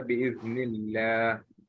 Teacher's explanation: the Lam of Allah is preceded by a kasra, it is light